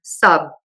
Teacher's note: In some cases, it almost is zero aspiration and you can just close your lips, like in the word sub.